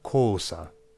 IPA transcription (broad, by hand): coːsa